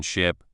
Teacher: For the short I in ship, your mouth is a bit more relaxed, and the sound is quick.